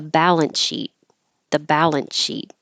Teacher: sh beginning but I'm not going to be very careful and I'm just going to kind of skip the S and it'll sound like the balance sheet